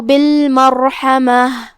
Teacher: यहाँ रा पे जज़म है, तो यहाँ रा का हुक्म है तफ़ख़ीम क्योंकि उससे पहले वाले हर्फ पे मतलब मीम पे ज़बर है, तो हम रा को भारी आवाज में अदा करेंगे।